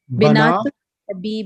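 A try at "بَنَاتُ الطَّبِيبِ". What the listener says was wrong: Not binat. It's banat.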